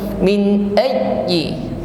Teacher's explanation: Min ayyi huruf ya tasydid, ya, ditekan membacanya namun tetap lembut, ya, tidak tersentak.